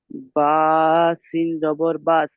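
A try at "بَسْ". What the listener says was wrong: সিনটা তিন আলিফ টান দিয়ে বলতে হবে। বা, সিন জাবার বাস।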